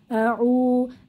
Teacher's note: পেশের বাম পাশে জজমওয়ালা ওয়াও মাদের হরফ, এক আলিফ টেনে পড়বো।